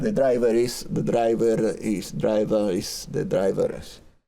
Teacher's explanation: Esto es general, esto es de fonética en general, Por ejemplo, si les digo the driver is en tal lado, está en tal lado, ahí esta R que cuando está la palabrita sola o cuando termina una oración no suena, cuando le continúa una vocal, esa R suena suavemente, pero suena.